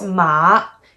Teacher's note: It goes down and up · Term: Third one